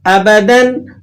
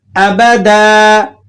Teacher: تو اس کے اندر جو بات سمجھنے کی ہے وہ یہ سمجھ لیں کہ دو زبر کی جو تنوین ہے، جب آپ اس پر وقف کرتے ہیں تو آپ نے اس دو زبر کی تنوین کو الف سے بدل کر اسے تھوڑا سا لمبا کر کے پڑھنا ہوتا ہے